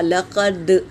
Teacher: دال پر سکون ہے تو قلقلہ ہوگا۔ لقد آواز ٹکرائے گی